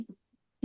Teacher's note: Aslinya kan kalau kita tidak berhenti kan ilaiya, maka ketika berhenti Ilai. disukun ilai, tetapi ditekan karena ada tasdid